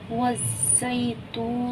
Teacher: वाव ज़ा ज़ब वज़, ज़ा या ज़ब ज़ै, वज़्ज़ै ता वाव पेश तू, वज़्ज़ैतू नून ज़ेनी, वज़्ज़ैतूनी। ये देखिए वाव सकीन है, उससे पहले पेश है तो वाव मद्दा हुआ। हम इसे एक अलिफ की मिक़दार खींच कर पढ़ेंगे।